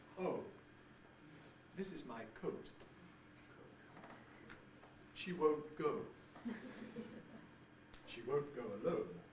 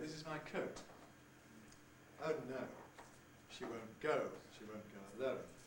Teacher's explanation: the usual pronunciation now is one that starts with an uh quality